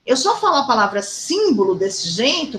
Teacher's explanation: Eu só falo a palavra símbolo desse jeito porque ela tem um acento no sim, na sílaba sim